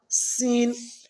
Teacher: سین جو ہے زبان کو ہم دانتوں سے باہر نہیں نکالیں گے بلکہ دانتوں کے اندر رکھ کر اس کو سیٹی کے ساتھ ادا کریں گے